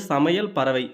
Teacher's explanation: ஐகாரம் சொல்லின் இடையிலும் இறுதியிலும் வரும்போது ஒரு மாத்திரை அளவில் ஒலிக்கும்